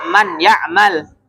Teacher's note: maka suaranya itu langsung masuk ke huruf berikutnya ya nun sukun dan tanwinnya itu gak dibaca lagi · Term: Idam